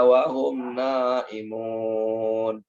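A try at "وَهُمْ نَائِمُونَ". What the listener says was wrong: Mohon maaf. Wahum naimun, itu dipanjangkan.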